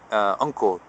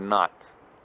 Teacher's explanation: an NG sound, something like the N sound in the word uncle. That's a different kind of N sound from the type of N in the word not.